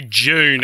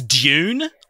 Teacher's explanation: we push D-U's and T-U's together to make like a J sound